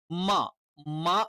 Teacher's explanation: രണ്ടു ചുണ്ടുകൾ ചേർന്നുവരും പക്ഷേ മൃദുവായിട്ടേ നമ്മൾ ചേർത്തു വെക്കുന്നുള്ളൂ